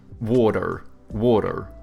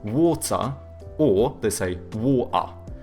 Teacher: Americans, they have like soft T's and then they pronounce their R's